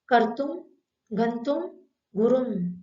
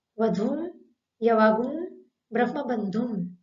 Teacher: अनुस्वार जब शब्द के बीच में आता है तब उसका उच्चारण करते समय दोनों ओष्ठ खुले रहेंगे। ध्यान रहे, शब्द के अंत में जब अनुस्वार आता है तब दोनों ओष्ठ मिल जाते हैं